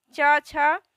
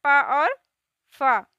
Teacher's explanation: जिन वर्णों के उच्चारण में स्वर तंत्रों में कंपन नहीं होता है उन्हें अघोष कहते हैं